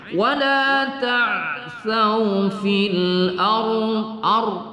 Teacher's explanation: Wala ta'sau fil ar ya, tebalkan ya, kita tafkhimkan kepada ra ya, ra sukun karena di belakangnya terdapat huruf isti'la, lebih berat lagi tebalnya ya